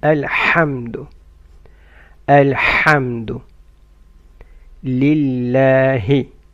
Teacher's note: ح should come from mid of the throat